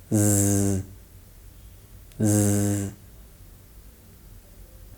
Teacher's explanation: This sound is produced by restricting the flow of air between the tip or blade of the tongue and the alveolar ridge, and using your voice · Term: Z sound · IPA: /z/